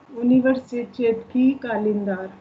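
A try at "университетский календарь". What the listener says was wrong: स भी तो है बीच में। यूनिवर्सिटेट्सकी कलिंदार।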